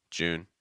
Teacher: you want to watch out for linking the oo sound to the N